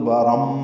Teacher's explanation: آگے با ہے ملانا ہو تو تبارم اقلاب ہو جائے گا